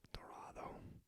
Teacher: And then you've got R, dorado, a rolled R sound, similar to the Scottish R